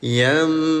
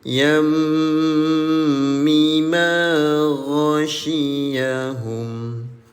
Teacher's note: namanya gunah, dengungkan selama 2 rakaat